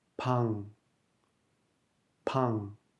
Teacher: en fin de syllabe, le iung n'est plus muet, il produit le son ng.